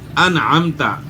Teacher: نون ساکن کے بعد حروف حلقی میں سے عین ہے تو نون ساکن میں غنہ نہیں ہوگا، اظہار ہوگا